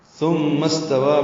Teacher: ثم استوى میں ثا کو نرمی سے ادا کریں گے، زبان کی نوک ثنایا علیا سے لگائیں گے، سامنے کے دانتوں کے اندرونی کناروں سے. میم مشدد پہ غنہ ہے، آواز ناک کے بانسے میں لے جائیں گے. استوا کا حمزہ عارضی ہے تو میم سین سے ملا دیں گے.